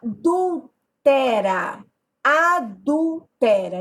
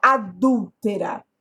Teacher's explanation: eu tenho uma proparoxítona a sílaba tônica é a antepenúltima